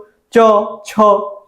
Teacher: একদম তালুতে। চ, ছ বলার সময় একদম মাঝখানে যে তালু, নরম তালুতে দেখবেন আপনার জিহ্বাটা টাচ করতেছে। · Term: তালব্য ধ্বনি